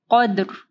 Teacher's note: را سے پہلے والا جو حرف ہے وہ ساکن ہے، اور اس سے پہلے والا قاف زبر ہے، تو را جو ہے وہ ہیوی پڑھی جائے گی